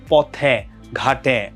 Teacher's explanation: পদের অন্তে এ সংবৃত হয় পদের অন্তে যখন থাকবে মানে শেষে যখন থাকবে তখন সেটা সংগৃত